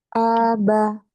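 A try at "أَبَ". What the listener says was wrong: Jangan panjang. Aba, aba. Ini huruf hijaiyah berharokat fathah. Nah, fathah itu dia Kak tidak boleh rahangnya terbuka kuat. Pasti rahangnya turun ya.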